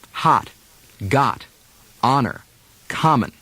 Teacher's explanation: The short O has many different pronunciations in America. Some standard American speakers do short O as if it were ah